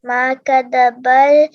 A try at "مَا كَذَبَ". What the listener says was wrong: پھر سے جو زال ہے نا مجھے صحیح سنائی نہیں دیا. ما کذبل